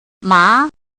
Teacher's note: the second tone 3 to 5